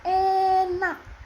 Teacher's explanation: E seperti e pada kata enak. Lidah di posisi tengah depan bibir tidak membulat